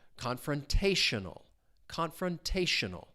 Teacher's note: The stress is on that third syllable.